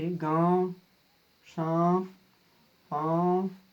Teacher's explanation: अनुनासिक वैसे शब्द या अक्षर जिसका उच्चारण में नाक और मुंह दोनों की सहायता ली जाती है। वैसे अक्षर जिसका उच्चारण में नाक और मुंह दोनों की सहायता ली जाती है उसे हम अनुनासिक कहते हैं।